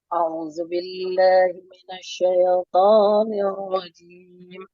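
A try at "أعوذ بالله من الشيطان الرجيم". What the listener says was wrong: Jangan a'udzu. Ya, jangan diseret bacanya.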